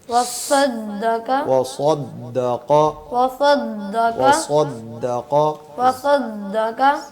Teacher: وصدق سواد میں بھی سیٹی کی آواز آتی ہے لیکن موٹی ہوتی ہے آواز